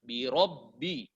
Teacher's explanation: Bukan asalnya tebal, tetapi ro tebal karena dia kondisinya dalam kondisi berbaris fathah. Birobbi. Tempelkan mulut, ya.